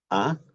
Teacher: lengua está hacia abajo, baja, laxa, ¿no? A, y el sonido sale por el centro de la boca.